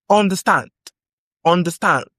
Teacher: Understand has stress on the final syllable.